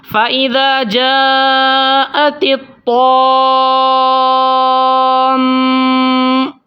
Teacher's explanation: کیونکہ میم کے اوپر تشدید ہے تو غنہ بھی ہوگا